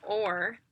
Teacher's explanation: Or is very similar, but or is even trickier because when we say or, there's a little bit of lip rounding. And with R's, a huge thing that we work on is getting rid of the lip rounding because so many kids want to do their R with a W.